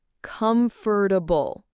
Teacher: That fort part often gets like compressed. Oh, yeah, you don't say comfortable.